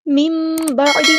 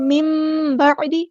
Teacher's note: یہاں پہ نون ساکن کے بعد با یا تو اقلاب ہو رہا ہے، میم بعدی، اس طرح میم کی آواز پڑھنی ہے